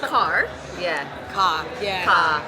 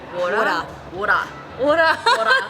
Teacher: The R sound, obviously you don't pronounce it very strongly